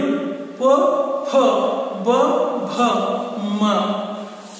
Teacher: ನೀವು ಪ, ಪ, ಪ, ಭ, ಮ ಅಕ್ಷರಗಳನ್ನ ಗಮನಿಸಿದ್ರು ಕೂಡ ತುಟಿಗಳ ಸಹಾಯದಿಂದ ಉಚ್ಚರಿಸಲ್ಪಡುವ ವರ್ಣಗಳು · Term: ಓಷ್ಠಗಳು